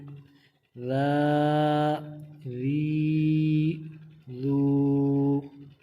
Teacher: زبان کا سرا اور اوپر والے دانتوں کے اندرونی کنارے سے یہ ادا ہوتا ہے، تو زبان کو اوپر والے دانتوں سے لگا کے نرمی کے ساتھ پڑھیں گے۔